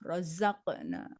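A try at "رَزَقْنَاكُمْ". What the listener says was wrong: Jangan lagi rozak, tapi rozako. Rozako. Iya, rozakonakum. Jangan rozak.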